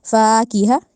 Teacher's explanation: الف مدہ کی وجہ سے فا کو لمبا کیا، اور کسی چیز کو نہیں کیا ، کی ہا کو لمبا نہیں کیا، فاکہہ اس طرح پڑھا